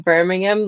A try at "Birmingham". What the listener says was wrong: You're saying it American again. It's Birmingham. It's Birmingham. Birmingham. Don't pronounce anything. Birmingham. Talk like it was that's how they talk. Birmingham. Birmingham.